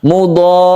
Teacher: Mudhar, ada tasydid ra yang harus kita tekan ya. Setelah kita mempanjangkan mudhar, baru kita tasydidkan ra-nya, kita panjangkan sampai 3 alif. Ini disebut dengan mad lazim mutawal atau mad lazim mutsaqal kilmi.